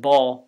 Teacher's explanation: It's not ball with a plain L, but ball with a velarized one.